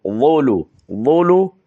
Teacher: وا کو تھوڑا سا پر کر کے ادا کرنا ہے، زولو نہیں پڑھنا بلکہ ظلو